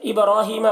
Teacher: बा में कलकला करेंगे, बा हुरूफ कलकला में से है और इसके ऊपर जज़्म है. रॉ को ऊपर खड़ा ज़बर है, रॉ को पुर पढ़ेंगे.